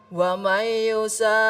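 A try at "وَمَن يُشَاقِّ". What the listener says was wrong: Iya, tapi ingat qinya juga ada tasdidnya. Wa may nun ketemu dengan ya, berdengung dulu. Wa may yusaqqillah.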